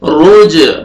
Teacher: रॉ को मोटा करके पढ़ना है और जीम क़लक़ला डबल साउंड आएगा